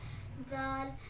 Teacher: जुबान की नोक को ऊपर सामने वाले 2 दांतों की जड़ से लगाकर अदा होता है।